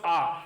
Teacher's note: अर्थ होता है खुलना तो इसका उदाहरण होता है दोस्तो आ आ के उच्चारण में मुख सबसे ज्यादा खुलता अपन आ का उच्चारण करेंगे ना तो मुख सबसे ज्यादा खुला · विवृत स्वर जिनके उच्चारण में मुख प्राय खुला सा रहता है विवृत का अर्थ होता है खुलना तो इसका उदाहरण होता है